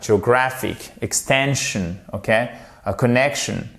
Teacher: Vous mettez l'accentuation sur l'avant-dernière syllabe